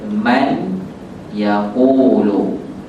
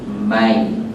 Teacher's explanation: Kalau macam nun mati bertemu dengan ya, baca bunyi huruf ya. Tak baca man yaqulu, kita baca mai, mim, ya. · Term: idgham